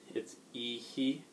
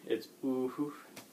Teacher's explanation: it's just letting a little extra puff of air out after the vowel